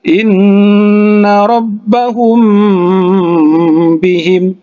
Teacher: huruf mim bertemu dengan huruf ba, ya, maka itu didengungkan